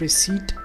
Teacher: the P remains silent all through the word